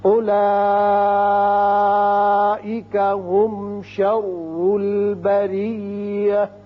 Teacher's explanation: اولئک مد متصل ہے، 5 حرکات کھینچیں گے